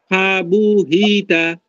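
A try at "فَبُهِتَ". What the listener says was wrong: এগুলো টান হবে না। ফেবু হিতে হরকতে টান হয় না। না, টান হতে হবে না, মানে টান করতেই পারবেন না এক কথায়। হরকতে টান হবে না।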